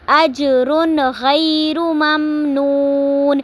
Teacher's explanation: اجرن تنوین کے بعد غیر غین آ رہا ہے تو اس کو ہم نے ظاہر کر کے پڑھنا ہے کیونکہ تنوین کے بعد حروف ہلکی میں سے غین آ رہا ہے تو اس کو ہم نے تنوین کو ظاہر کر کے پڑھیں گے، اخفا نہیں کریں گے، غنہ نہیں کریں گے